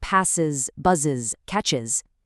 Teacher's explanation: This specific realization follows sibilant consonants, which are those hissing or hushing sounds like s, z, sh, or ch. Because you cannot easily pronounce two hissing sounds back-to-back, English forces an extra syllable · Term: is phoneme